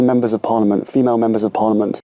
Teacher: he's pronounced parliament he's gone into the t sound at the end of the word but he's not released the sound he's not said parliament okay he's just gone into it pause